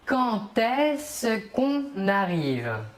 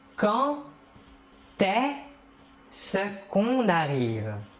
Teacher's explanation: Le verbe commence par un E. Le D ici, pour la liaison, va se prononcer comme un T, comme si c'était un T, mais on l'écrit D.